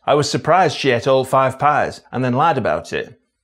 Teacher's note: the PRIZE vowel can be a long a